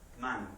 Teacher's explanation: vamos a comenzar con una consonante nasal bilabial Sonora